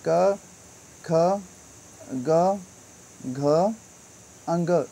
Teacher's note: क वर्ग है, उच्चारण स्थान कंठ से होता है